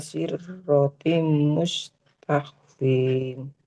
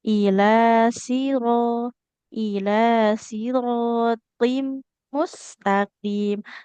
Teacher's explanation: Nah enggak boleh sirro rnya enggak bertasydid gitu ya